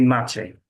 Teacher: ch, as in church, but you make it more palatalized